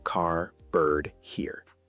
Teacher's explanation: American English is generally quite clear. The R sound is always pronounced